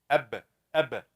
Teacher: the two lips will get together close completely before they open